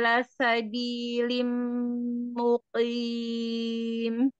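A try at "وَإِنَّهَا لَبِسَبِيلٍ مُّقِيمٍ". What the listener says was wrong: tadi labi bukan lasa ya.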